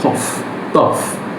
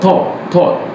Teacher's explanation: in British they often will say it long rounded aw sound